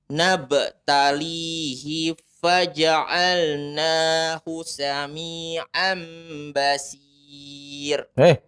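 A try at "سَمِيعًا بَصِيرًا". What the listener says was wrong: Bukan basir, ada alifnya. Basira ya.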